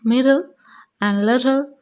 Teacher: the tip of the tongue does not leave the teeth ridge and the center but the air escaped through the sides of the tongue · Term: lateral plosion